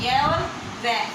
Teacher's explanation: उच्चारण के समय हवा बिना संघर्ष के बाहर निकल गई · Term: संघर्षहीन व्यंजन